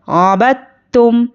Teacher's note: हम इस दाल को नहीं पढ़ेंगे, बा को ता से मिलाएंगे